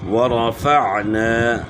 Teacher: عین کے بعد گلے کے درمیان سے آگے الف مدہ ہے، اس کو کھینچنا ہے